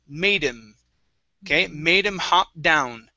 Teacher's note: him hop down okay so make sure to pronounce this D we're going to combine into the word him we're dropping the H sound